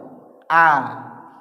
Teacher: Yang hamzah itu di adnal halqi itu di tenggorokan paling bawah.